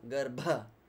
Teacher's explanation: You can hear that aerial explosion, yeah? Garbha. That's the aspiration on bha sound.